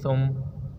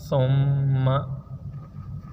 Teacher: اب تھا کو میم کے ساتھ ہم نے ملا کر پڑھا ہے اور تھا کے اوپر سیٹی کی آواز نہیں نکالنی، مطلب یہ سین نہیں ہے، یہ تھا ہے